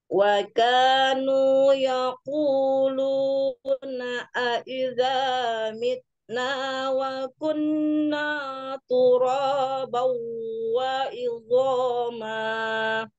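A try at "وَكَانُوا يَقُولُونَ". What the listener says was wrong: Jangan naiknya, jangan naik. Bakuna, jangan. Kuna, tipis ke bawah semua. Ke bawah, huruf tipis. yang tipis. Jangan tebal.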